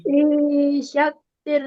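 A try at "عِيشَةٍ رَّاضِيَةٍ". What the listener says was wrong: Bukan syatir, nggak ada tasjidnya di sini. Tasjidnya di roh. Aisyatir. Aisyatir. Lagi ya, itu rodidi. Ya, kedal itu jadinya. Tarik lagi, yang atas seperti atas tadi. Rodiyah. Lidahnya ditempelin di sini. panjang. Aisyatir radiyah. Pendek, pendek.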